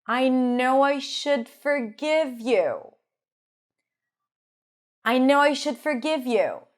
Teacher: Can you hear the schwas or the lax I sound here?